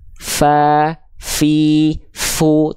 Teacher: huruf fa juga punya sifat hams, tapi kadarnya mengalir nafas, bukan percikan nafas